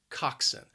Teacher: It has 2 syllables and the stress is on that first syllable. Again, that second syllable can be a bit confusing, has that schwa, even though the spelling just does not look like that at all.